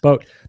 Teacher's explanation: And I'm just releasing that T lightly